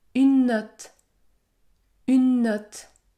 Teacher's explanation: je lis les deux mots ensemble et du coup je prononce un seul N qui est plus long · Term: consonne double